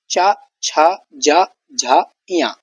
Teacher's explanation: तो इसका उच्चारण स्थान जो है वो तालु है। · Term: तालव्य वर्ण